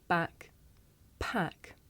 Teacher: With the voiceless sound, there's a big puff of air. You can feel it with your hands.